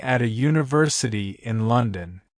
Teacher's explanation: The word university starts with the letter U, but it's pronounced like Ju, which sounds like a Y, not a vowel sound. Since it starts with a Y sound, which is a consonant sound, we need to use a instead of an.